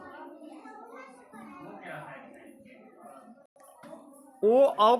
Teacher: ओ और आओ को कंठ और ओष्ठ दोनों से बोला जाता है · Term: कंठोष्ठ